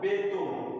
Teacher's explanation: মধ্য অ এর আগে এ থাকলে অ ও কারকে উচ্চারিত হয়